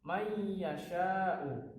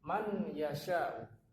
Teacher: Maka cara membacanya, ini ada tasdidnya, may yasha'u, bukan man yasha'u. Jadi nun ini disamarkan, nunnya disamarkan, kemudian dia masuk ke ya. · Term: idgham bi gunnah